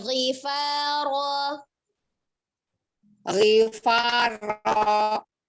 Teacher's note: di huruf yang tebal yang harusnya dinaikkan, pangkal lidahnya naik ya, jadi dia harusnya naik bukan menurun. Ya, tapi perlakukan seperti huruf yang tipis.